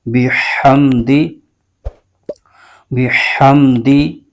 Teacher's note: ہم نے ہا کو حلق کے درمیانی حصے سے ادا کرنا ہے